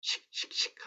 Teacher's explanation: 남한어에 비해서 굉장히 좀 마찰성이 강한 그런 느낌이 든다. 이런 느낌을 아마 받으셨을 겁니다. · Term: 시옷